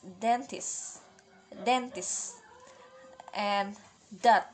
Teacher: Suara yang dihasilkannya ini alveolar dan harus plosive. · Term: voice alveolar plosive